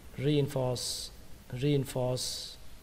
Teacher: Đó là chữ re và chữ force. Nhưng mà trong âm chính là âm force các bạn nhé. Chữ re này nó hơi nhỏ hơn âm force một chút.